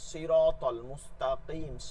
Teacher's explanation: এগুলো হরফ উচ্চারণ মোটা হয়, মোটা হয়, সবগুলো মোটা